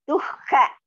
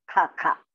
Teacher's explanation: Dukha. Du is Alpa Prana. Kha is Mahaprana.